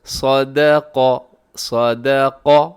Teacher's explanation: صاد بھی موٹا ہے، دال باریک ہے، آگے قاف موٹا ہے